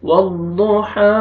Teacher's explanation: واو کو ضاد کے ساتھ ملائیں گے، ضاد کو موٹا کر کے پڑھیں گے، ہا کو آپ نے کھینچنا ہے، ہا کو مرکھڑا زبر ہے اور ہا پڑھنا ہے تاکہ ہا میں آپ کا آواز مکس نہ ہو۔